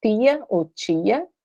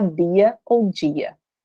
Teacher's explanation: Eu modifiquei um som que era d, eu vou fazer ele ficar jan, o t fazer ficar tchan